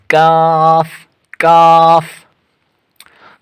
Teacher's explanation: زبان کی جڑ سے کچھ اوپر کا حصہ اور اس کے مقابل اوپر کا تالو